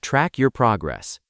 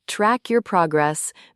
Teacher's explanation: noticing how the K in track and the Y in your often blend together naturally in fast speech